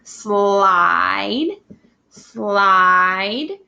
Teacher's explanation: that was a long vowel meaning it's saying its name